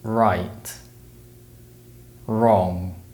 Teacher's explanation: the r sound is produced by raising the tongue behind the ridge of the mouth